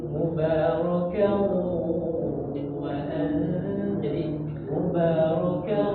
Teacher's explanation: Sambil didengung di dalam hidung ya.